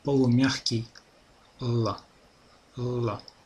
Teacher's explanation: Чешский звук л, обратите внимание, он находится между твердым русским и мягким русским л и л. Полумягкий л.